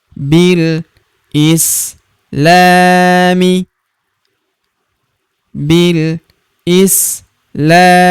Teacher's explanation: Huruf la kita panjangkan dua harakat karena terdapat tanda alif di depannya yang ini.